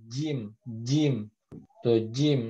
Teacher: makhrojnya Tengah menempel kepada langit-langit tadi sudah terlihat kan bahwasanya gym itu nempel bener-bener nempel gitu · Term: huruf Jim